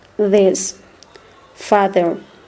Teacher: The dental fricative sounds. The voice sound.